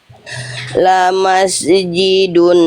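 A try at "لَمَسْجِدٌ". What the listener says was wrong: Sin sukun jangan mantul. Lamas ji. Mantul. Jangan mantul.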